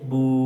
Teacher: में तो उल्टा पेश यह बराबर है वाव मद के यानी जिस तरह वाव मद को एक अलिफ के बराबर हम खींच कर पढ़ते हैं जैसे बा वव पेश बू उसी तरह हम उल्टा पेश को